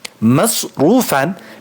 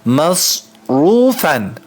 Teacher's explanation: mim harfi incedir s harfi kalın